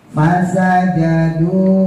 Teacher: Kalau fa bukan bibir dua-duanya tapi bibir bawah digigit gigi atas.